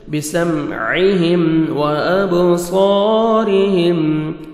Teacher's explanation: با حروف قلقلہ میں سے ڈبل ساؤنڈ آئے گا، صاد کو موٹا کر کے پڑھنا ہے، 1 سیکنڈ کھینچنا ہے، الف مد ہے، را کے نیچے زیر ہے، را کو ہم باریک کر کے پڑھیں گے.